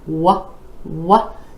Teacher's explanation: you want to really round your lips for that what what sound